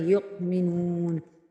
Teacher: حمزہ کے اوپر جزم آ جائے تو یہاں پہ ہلکا سا جھٹکا لگائیں گے اور جھٹکا لگا کر اس کو پڑھیں گے یؤمنون۔